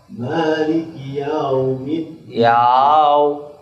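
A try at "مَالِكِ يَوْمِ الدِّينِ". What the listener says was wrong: Ya-nya tipis, jangan terlalu tebal seperti yo. Ya. Yau langsung.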